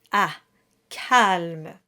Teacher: The French A is very bright. It's placed forward and high.